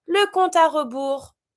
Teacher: and of course, as usual, you don't pronounce the S.